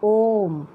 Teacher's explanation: ओम जो ओ का उच्चारण है वो जो हमारा सबसे छोटा स्वर है ह्रस्व स्वर, उससे 3 गुना अधिक समय लग रहा है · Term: प्लुप्त स्वर वर्ण